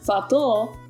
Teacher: The difference in meaning between fatto, meaning fate, and fatto, fact, rests entirely on pronouncing the double T with a slight pause and emphasis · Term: double consonants